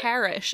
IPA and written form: pærish (parish)